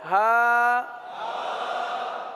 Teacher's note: حلق کے آخر والے حصے سے